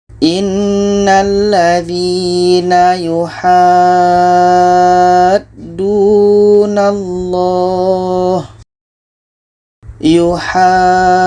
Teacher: Maka cara bacanya, ha ini kita panjangkan 6 harakat baru masuk ke huruf yang ada tasydid. Kita baca innalladzina yuhaddunallah. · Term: mat lazim kilmi mutsaqqal